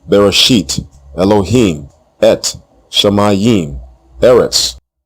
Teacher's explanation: the short E vowel and the long E vowel dominates the Tiberian dialect